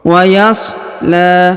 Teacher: huruf la dipanjangkan dua harakat karena di atasnya terdapat Alif kecil dan di depannya terdapat alif bengkok atau Alif maksurah waashla sairo